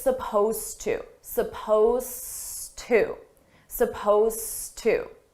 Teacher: suppose is spelled with an ed it's an ed verb but you don't hear it at all